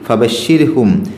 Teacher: 24-ാമത്തെ ആയത്തിൽ ഫബശ്ശിർഹും, അവിടെ റാഇന് സുക്കൂന് വന്നു, അതിൻ്റെ തൊട്ട് മുമ്പ് കെസറുള്ള അക്ഷരമാണ്, അതുകൊണ്ട് ര് എന്നുള്ള ഉച്ചാരണമാണ് കൊടുക്കേണ്ടത്.